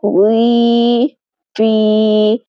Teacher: وی، فی میں آخر میں آواز منہ کے اندر کی خالی جگہ سے ادا ہو رہی ہے.